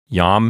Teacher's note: Yam is one syllable. Notice that yam starts with a consonantal I.